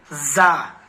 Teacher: نوک زبان اوپر نیچے کے دانتوں سے مل کر زا، نوک زبان یہ سب سے پتلا حصہ، زبان کا جو سب سے پہلا حصہ ہے، تھوڑا سا جو پہلا حصہ ہے باریک حصہ لگائیں گے اوپر نیچے کے دانتوں کے بیچ میں، نیچے.